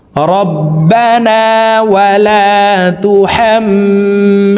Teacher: এই হরকতওয়ালা হাটি তাসদিদওয়ালা মিমের সাথে 3 সেকেন্ড পরিমাণ গুন্নাহ করে ধরে রেখে পড়তে হবে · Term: ওয়াজিব গুন্নাহ